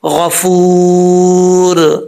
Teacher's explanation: वाव मद्दा है यहां पे, एक अलिफ की मकदार लंबा करेंगे